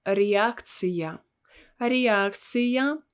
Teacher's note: in all these words, we have this letter я in the position where we had to pronounce it with two sounds and with a sound y